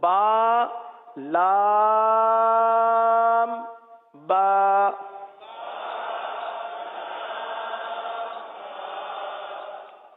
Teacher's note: با دونوں ہونٹوں کے تر حصے سے ادا ہوتا ہے